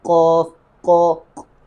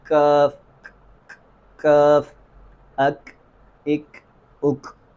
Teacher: اور کاف میں ہمس کی آواز پیدا ہوتی ہے